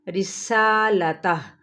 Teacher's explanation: کے برابر کھینچیں گے، لتا، ہا جون سا الٹا پیش ہے، اگر ہم وقف کرتے ہیں تو یہاں پر ہا کی ساؤنڈ نکالتے ہوئے رسالتہ ساکن کر دیں گے